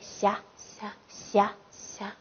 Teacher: 发音部位舌面前。舌面前。